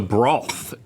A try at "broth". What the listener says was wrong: Why'd you put a W in broth?